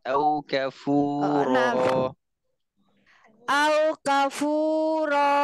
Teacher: ro-nya panjangin kayak dua harokat